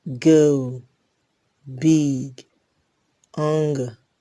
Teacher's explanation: g is a voiced velar plosive.